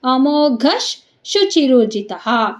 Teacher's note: ವಿಸರ್ಗದ ಮುಂದೆ ಶ ಇದೆ ಅದಕ್ಕೆ ಘ ಆದಮೇಲೆ ವಿಸರ್ಗ ಏನಾಯ್ತು ಚೇಂಜ್ ಆಯ್ತು ಶ ಅರ್ಧ ಆಗಿ ಚೇಂಜ್ ಆಯ್ತು